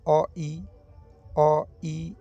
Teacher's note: अ बोल रहे हैं तो उसके बाद सीधा ई में चल जा रहे हैं अ फिर बोल रहे हैं तो हर्षी में चल जा रहे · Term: विजातीय